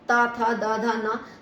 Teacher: 4th number पर हमारा तवर्ग आता है, ता था दा धा ना, तो वो हमारे ता से जीभ जो हमारी दांतों से टकराती है इसलिए हम उसको दंत्य कहते हैं